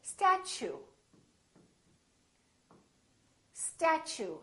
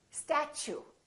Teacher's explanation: so the T and U create a new sound and it sounds kind of like CH